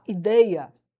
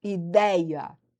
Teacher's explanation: no português europeu, que é o português de Portugal, ele vai falar ideia, é um som fechado